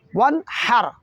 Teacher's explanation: کہیں ایسا نہ ہو کہ ون کی نون متحرک نہ ہو جائے جبکہ نون ساکن ہے۔ وانحر، ہر، ہا پڑھنا ہے نہ کہ ہا، وانحر نہیں پڑھیں گے، الٹ نہیں پڑھیں گے، بلکہ صحیح حرف ہے ہا، وانحر۔